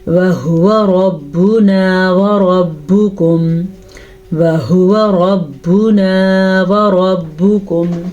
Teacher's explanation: را کو پر پڑھیں گے، را پہ زبر کی وجہ سے دونوں را پر پڑھی جائیں گی اور کاف باریک پڑھیں گے. یہ موٹا کاف نہیں ہے، یہ باریک کاف ہے.